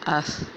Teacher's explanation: آپ کی زبان کی نوک آپ کے اگلے دانتوں کے جو ہے وہ کنارے سے لگ رہی ہے، سامنے والے دو دانتوں کے کنارے سے لگ رہی ہے، تو یعنی ہمیں یہاں سے ثا کا مخرج معلوم ہو گیا۔